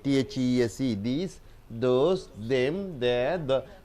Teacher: All the pronoun ths are voiced.